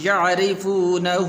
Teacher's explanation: را کے نیچے زیر ہے، را کو باریک پڑھنا ہے